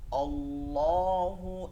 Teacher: আর লাতে টান দিতে হবে তিন আলিফ